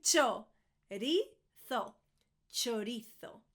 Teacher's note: I'm Spanish, that's why I'm doing the TH at the end, the th.